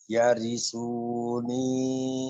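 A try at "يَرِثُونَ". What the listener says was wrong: salah Pak nggak ada yang panjang panjangnya ujungnya doang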